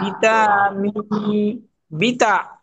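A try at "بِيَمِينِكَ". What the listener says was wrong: বি তা না, তা উপরে, দুটো নোকতা থাকা উপরে, নিচে।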